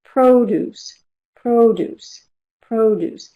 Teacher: And within that stress syllable, we have a peak sound, the most important sound, which is the vowel, because it's the vowel that we notice. It's the vowel that's lengthened. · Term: primary stress